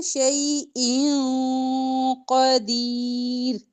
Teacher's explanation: ان میں جو نون کی آواز آ رہی ہے وہ قاف آنے کی وجہ سے ہائڈ ہو جائے گی چھپ جائے گی اخفا ہوگا ٹھیک ہے شیء قدیر اخفا کو ذرا ٹائم